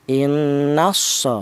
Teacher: Yang dimaksud idgham ya di mana lam matinya ini itu dilebur langsung ke huruf shad. Jadi lam matinya cara bacanya tidak dibaca. Jadi harakat nun yang berharakat fathah ini langsung masuk ke huruf shad. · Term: idgham syamsiyah, idgham samsiyah